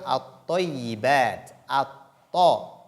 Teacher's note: nous constatons que la lettre Lam n'est pas lue.